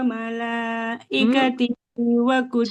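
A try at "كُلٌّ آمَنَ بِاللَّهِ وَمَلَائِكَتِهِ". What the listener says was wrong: Amana billahi, haknya kasrah tidak bertemu ya, maka nggak boleh panjang ya. Kullun amana billahi wa malaikatihi.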